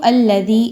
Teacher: اس کے بعد دیکھیں تو یا پر جزم کا نشان ہے اور اس سے پہلے والے حرف ذال کے نیچے زیر ہے، یا مدہ ہے، 2 حرکات کے برابر، 2 الف کے برابر اس کو لمبا کریں گے